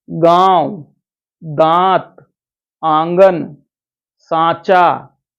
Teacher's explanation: ऐसे स्वरों का उच्चारण नाक और मुंह दोनों से होता है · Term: अनुनासिक